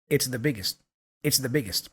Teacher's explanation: So again, that T for biggest kind of disappears. It's a stop consonant.